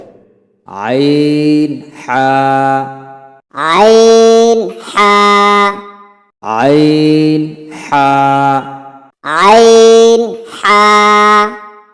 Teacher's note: হামজা হা হামজা হা হামজা হা হামজা হা তারপরে আসি দুই নাম্বার মাখরাজ হলকের মধ্যখান হইতে অর্থাৎ কন্ঠনালীর মধ্যখান থেকে উচ্চারিত হয় আইন হা এই হরফ দুইটি কন্ঠনালীর মধ্যখান থেকে চেপে উচ্চারণ করতে হবে।